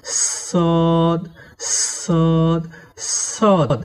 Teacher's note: সদ হরফের মাখরাজ হলো জিহুবার আগা এবং সামনের নিচের দুই দাঁতের গোড়া একসঙ্গে লাগিয়ে শীর্ষসহ মোটা করে পড়তে হয়